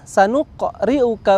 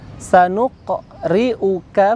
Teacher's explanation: huruf Qalqalah atau huruf qaf disini mantul